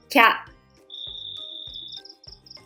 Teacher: The consonant of the first letter is k, but the vowel I will be dropped. Then put ya after that.